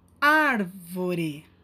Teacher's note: nesse caso é a antepenúltima sílaba a sílaba mais forte a sílaba tônica